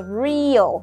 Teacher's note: cách đọc thứ nhất là mình sẽ đọc cái EA này thành Y dài, sau đó là âm Ơ ngắn. Cách thứ hai là mình sẽ đọc thành một cái nguyên âm đôi, đó chính là âm ear, ear.